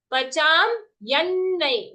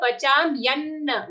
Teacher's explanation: Okay, so pacham ya, for the ya is followed by half na joined to a full na.